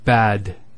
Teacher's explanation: notice the elongation of the a sound we don't say bad we say bad similarly we have the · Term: long vowel